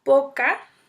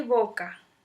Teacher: la P es una oclusiva bilabial sorda, mientras que la B es una oclusiva bilabial sonora